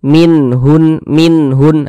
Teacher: maka dibaca jelas tidak berdengung nunnya itu kita baca jelas minhun minhun nah kemudian dia tidak didengungkan jadi karena dia tidak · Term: izhar halqi